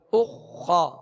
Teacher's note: पेश अदा किया तो होठ गोल और जब खा की जबर पढ़ेंगे तो आवाज और मुंह खोलेंगे